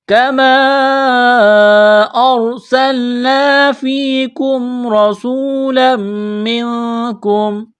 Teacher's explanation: تو را کو موٹا کرنا ہے، اس زبر کی وجہ سے، سین میں سیٹی کی آواز پیدا کریں گے، سین کو باریک کرنا ہے · را ساکن سے پہلے زبر ہے تو را کو موٹا کرنا ہے، اس زبر کی وجہ سے · وجہ سے، لام میم دو زبر لم، میم نون زیر من، تنوین کے بعد میم مشدد ہے، یہاں غنہ کریں گے، آواز ناک میں چھپائیں گے